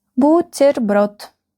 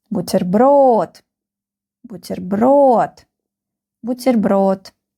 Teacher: The last syllable is stressed.